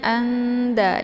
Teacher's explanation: ini adalah salah satu daripada huruf ikhfa maka cara bacanya itu nun-nya disamarkan ya jadi nun-nya itu tidak begitu dibaca jelas